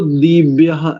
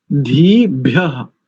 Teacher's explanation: धीभ्य सब लोग इसका ध्यान रखें, क्योंकि दोनों ही वर्ण महाप्राण वाले हैं। ध और भा यानी इनमें अधिक प्राण का प्रयोग होगा उच्चारण करते समय